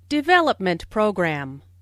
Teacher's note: Since these two words make a compound noun, the main stress falls on development.